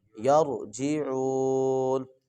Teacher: یہ را کو موٹا کر کے پڑھیں گے